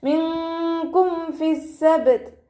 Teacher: മിൻകും ഫിസ്സബ്ത്, നൂൻ സാക്കിനയ്ക്ക് ശേഷം ഇഖ്ഫായിൻ്റെ അക്ഷരമായിട്ടുള്ള കാഫ് വന്നു, നൂൻ സാക്കിനയെ മറച്ച് വെച്ച് മണിച്ചോതി കൊടുക്കുക കേട്ടോ